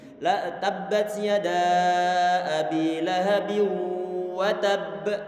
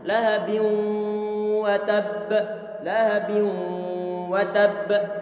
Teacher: ada dengungan ataupun ada getaran di hidung kita, menandakan bahwa di sini ini ada gunnahnya